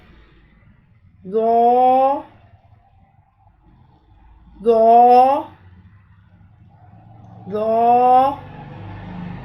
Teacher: ज़ुबान की नोक को सामने वाले ऊपर के दो दांतों के अंदरूनी किनारों से नरमी से लगाएंगे और ज़ुबान के पिछले हिस्से को तालू की तरफ बुलंद करेंगे। पूरा आवाज़ में, मोटी आवाज़ में हम पढ़ेंगे, पिछले हिस्से को तालू की तरफ बुलंद करते हुए दो दो दो। · पूरा आवाज़ में, मोटी आवाज़ में हम पढ़ेंगे, पिछले हिस्से को तालू की तरफ बुलंद करते हुए दो दो दो। नरमी से अदा होगा, सख्ती से अदा नहीं करना।